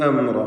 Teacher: അവിടെ വാവിൻ്റെ ദീർഘം മദ് മുൻഫസിൽ ജായിസാണ്. 4-5 ഹറക്കത്തിൻ്റെ അളവിൽ അതിന് ദീർഘം നൽകുക. അംറ എന്നതിലെ സക്കിനത്തെ മീമിനെ ഇൽഹാർ ഷഫഈ നൽകി മണിക്കാതെ വെളിവാക്കണം.